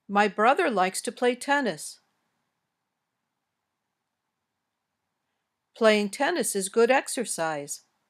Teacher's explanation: they usually have statements in English usually have this intonation pattern your voice goes up on an important word near the end of the sentence then goes down at the end